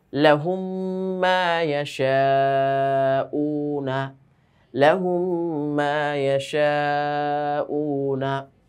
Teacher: দ্বিতীয় মিমে তাসদিদ দিয়ে গুন্না সহ মিলাইয়া পড়িত হয় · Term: ঈদগামে মিসলাইন